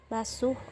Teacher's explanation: fonem konsonan frikatif alveolar tak bersuara karena dihasilkan dengan menempelkan ujung lidah pada gusi bawah sambil melepaskan udara lewat samping lidah sehingga menimbulkan bunyi desis.